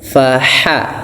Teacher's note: faha dari tengah tenggorokan kita ya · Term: ha lembut